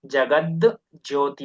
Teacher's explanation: first ಜಸ್ ಸಂಧಿನೇ ಆಗುತ್ತೆ ತಕಾರ ಇದ್ದಿದ್ದು ದಕಾರ ಆಗುತ್ತೆ